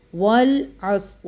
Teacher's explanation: واو لام زبر ول، عین صاد زبر عص، والعصر را زیر ری، والعصر، اس طرح کا اس کو پڑھنا ہے۔ واو کو لام کے ساتھ پکڑنا ہے، عین کو صاد کے ساتھ پکڑنا ہے، ٹھیک ہے، جھٹکے نہیں دینے۔ اور جب وقف کریں گے تو را کو ساکن کر دیں گے، تو پڑھیں گے والعصر، ایسے کر کے ساکن۔